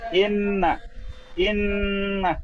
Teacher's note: নুন তাজদিদ গুণনা করতে হবে